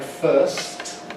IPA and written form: fɜːst (first)